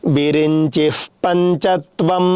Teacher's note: పకారానికి ముందు వచ్చేటటువంటి విసర్గకు ఉపద్వానీయము అని పేరు ఆ విసర్గను పెదవులతో పలకాలి